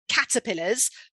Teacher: caterpillars with the stress on the first syllable